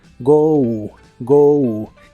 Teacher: se pronuncia como si tuviera una u al final